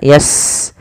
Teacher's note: Sin punya sifat namanya hamas, alirkan nafasnya